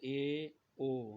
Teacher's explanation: ऐसा स्वर जिसके उच्चारण में थोड़ा मुंह खुलता है, तो उसे अर्ध संवृत स्वर कहेंगे।